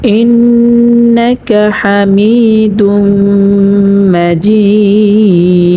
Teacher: এখানে অক্ফ হওয়ার কারণে দালটা সাকিন হয়ে যাবে। · মদ্দে আরজি 3 আলিফ পরিমাণটা নিয়ে পড়তে হবে।